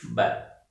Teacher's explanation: दोनों होठ चिपक रहे हैं